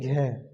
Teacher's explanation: अब ये क्या है, सघोष भी है और महाप्राण भी है। महाप्राण यानी आपको समय लगेगा थोड़ा सा, सघोष यानी आपको थोड़ा सा वाइब्रेशन से होगी।